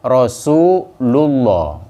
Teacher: cara bacanya prakteknya tebal tanpa getar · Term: tafkhim